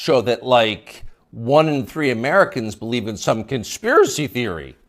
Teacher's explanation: You'll notice the upspeak, the rising inflection at the end of the sentence.